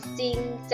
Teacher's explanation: จริงออกเสียงเฉพาะพยัญชนะต้นตัวแรกคือจอจานตัวที่2จะไม่ออกเสียงนะคะ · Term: คำควบกล้ำไม่แท้